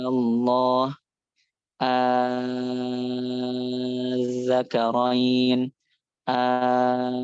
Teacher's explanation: hamzah wasalnya diganti pakai alif, ya kan? Kemudian dipanjangkan 6 harokat, itu. Karena bertemu dengan sukun ya. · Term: mad farqi